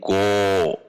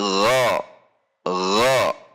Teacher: karena menaiknya pangkal lidah sehingga nanti yang huruf a menjadi o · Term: isti'la